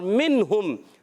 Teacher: نون ساکن کے بعد آ گیا ہے ہا، اظہار حلقی کا قاعدہ، ٹھیک ہے، آپ نے یاد رکھنا ہے، غنہ نہیں کریں گے